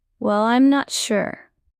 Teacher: Say well with a soft rising tone. Smile when you say it.